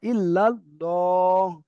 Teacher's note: ল হচ্ছে পুর হচ্ছে। মুখ গোল হচ্ছে। পুর অর্থাৎ মুখ গোল।